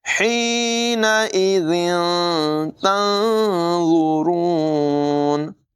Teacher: ضا کو بھی پر پڑھیں گے، را کو بھی پر پڑھیں گے